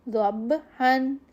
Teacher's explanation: با پہ قلقلہ کرنا ہے لیکن غنہ نہیں دینا